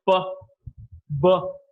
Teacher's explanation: when two lips come in contact to produce a sound it is known as a bilabial sounds